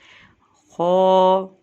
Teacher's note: ہا کی آواز حلق سے نکلتی ہے، ٹھیک ہے؟ خو، خو کو ہم پر کر کے یعنی موٹا کر کے ادا کرتے ہیں